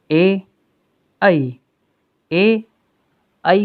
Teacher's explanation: कंठ और तालु की सहायता से बोले जाने वाले वर्ण स्वर में ए, ऐ को बोलने के लिए हमें कंठ से ध्वनि आएगी और जिह्वा तालु को स्पर्श करेगी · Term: कंठ तालु